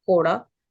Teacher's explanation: quora that is set in a low pitch that means whip